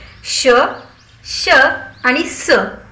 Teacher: आणि पुढचा उपप्रकार होता उष्मे किंवा घर्षक। श, श आणि स यांचा उच्चार तोंडातून काहीसा उच्छ्वास म्हणजेच उसासा सोडून केल्यासारखा होतो, त्यावेळी वायूचे मुखात एक प्रकारे घर्षणच होते, त्यामुळे या मुखामध्ये उष्णता निर्माण होते, म्हणून त्यांना उष्मे किंवा घर्षक असं म्हणतात।